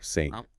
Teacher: >> The beginning of that word is what linguists call a consonant cluster. It's an s and a t blended seamlessly together.